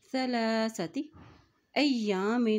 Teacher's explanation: لام کے اوپر کھڑی زبر ہے تو اس کو ایک حرکت لمبا ادا کریں گے